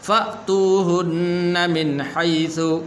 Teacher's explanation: یہ حمزہ ہے، اس کو فاتوہن نہیں پڑھنا، فأتوہن من حیث، یہاں پر غنہ نہیں کریں گے اس لیے کہ آگے حا حروف حلقی میں سے ہے · یہاں پر فا کے بعد یہ حمزہ ہے، اس کو فاتوہن نہیں پڑھنا